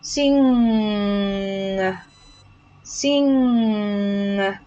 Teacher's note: The thing is the ng sound, you keep the ng sound very long